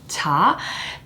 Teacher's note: when you pronounce a syllable like ta the vibration of the vocal cord does not take place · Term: unvoiced consonant